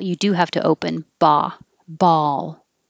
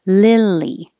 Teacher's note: li is a little bit lower than e